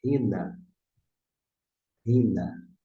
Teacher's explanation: você não pronuncia ina, porque tem uma aspiração. Se aumentar aqui o texto, vocês vão observar que tem uma aspiração.